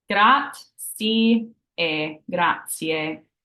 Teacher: It's just, they say it so quickly sometimes it gets lost. But the correct way to say thank you is grazie with the AY sound at the end